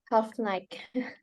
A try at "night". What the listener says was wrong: Bukan half night ya. Night ya. Night gitu GH-nya masih kedengeran ya. Harusnya nggak boleh ya. Night. Jadi GH-nya nggak dibaca.